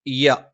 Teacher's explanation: ആയത്ത് വആയത്തുല്ലഹമലമ ഓരോ അക്ഷരങ്ങൾ നോക്കാം വ ചുണ്ടുവൃത്താകൃതിയിലാണ് അ തൊണ്ടയുടെ താഴ്ഭാഗം യ നാവിന്റെ മധ്യഭാഗം മേലെ അണ്ണാക്കിലാണ്